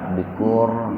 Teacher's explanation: Huruf ro yang mati didahului domah. Jadi huruf ro-nya dibaca tebal